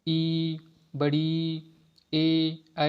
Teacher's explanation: जिन जिन स्वरों के उच्चारण में जीभ का अग्रभाग कार्य करता है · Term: अग्र स्वर